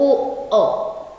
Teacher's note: ओ और औ। अ शब्द कंठ से भी आता है, ओ कहे तो ओठ घूम जाता है, ओठ सकता है, तो कंठ जोड़ ओष्ठ उच्चारण स्थान है, तो ओ अ। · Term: कंठोष्ठ्य